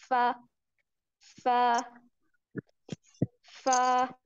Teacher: हमारे जो सामने वाले ऊपर के दो दांत हैं उनके किनारों को निचले जो नीचे वाला है उसके गीले हिस्से से लगाकर बारीक आवाज में पढ़ेंगे